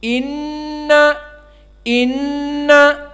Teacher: ghunnah di sini dua harokat maka harus dibaca 2 harokat · Maka inna nun musyaddadah di sini memberikan faidah gunnah. Apa makna gunnah? Makhrajnya dari hidung.